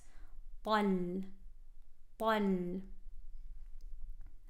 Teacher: heavy ta with the fatha going straight into a lam with sukoon. This lam is light, heavy, light.